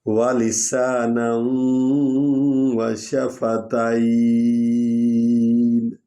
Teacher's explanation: نون کو وا میں ادغام کریں گے کیونکہ وا پر شد ہے تو اس پر نون غنہ کریں گے